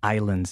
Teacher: Remember, the S in islands is silent, okay? We don't say Icelands.